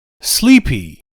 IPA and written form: ˈsliːpi (sleepy)